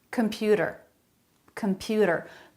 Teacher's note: a flap instead of a T sound · Computer, a flap instead of t, a T sound. Computer, computer, middle syllable stress.